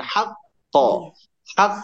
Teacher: jadi ditahan satu ketukan baru pantulkan